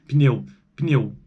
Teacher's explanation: pneu tem tem uma vogal aí entre o p e o n não tem entre as consoantes isso é característica do português brasileiro